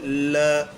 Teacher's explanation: ल ऐसा लगता है जैसे वायु जीभ के साइड से होकर के गुजर गई हो। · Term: पार्श्विक व्यंजन